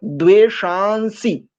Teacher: यजिष्ठो, वह नी, हा पहले है, ना बाद में, और इकार फिर सबसे बाद में, वह नी, हकार आधा, नकार भी आधा और फिर इकार, वह नी तमः, शोषु चानो, विश्वा, द्वेषांसी, शान, नकार, इस अनुस्वार को नकार न की भांति उच्चारण करते चलेंगे